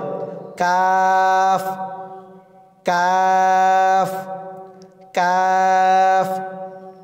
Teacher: তারপর কাফের মাখরাজ মধ্যখান পেঁচানো কাফ জিহ্বার গোড়া থেকে একটু আগে বাড়িয়ে তার বরাবর উপরের তালুর সঙ্গে লাগিয়ে উচ্চারিত হয়। আবার বলি জিহ্বার গোড়া থেকে একটু আগে বাড়িয়ে তার বরাবর উপরের তালুর সঙ্গে লাগিয়ে উচ্চারিত হয় কাফ কাফ কাফ।